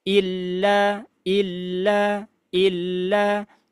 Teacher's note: yang paling penting di sini ada tasydid berarti harus ditahan ya